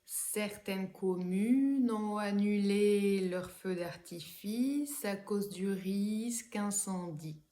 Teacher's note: à la fin de ces mots phonétiques, il y a une syllabe qui est plus longue